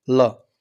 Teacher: इसलिए इसको पार्श्विक मतलब पास से, जिनका उच्चारण हम करते हैं, जीभ दाँतों का स्पर्श करती है तो हवा पास से गुजर जाती है, इसलिए इसको पार्श्विक व्यंजन के नाम से जाना जाता है, इसको लय हम कहते हैं।